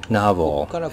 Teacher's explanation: This file is saying navo and this section the beginning section which corresponds to the first syllable is nav and the other end is v. As you can see there is a pitch difference because nav sounds a little higher · there is a pitch difference because nav sounds a little higher in pitch than the other part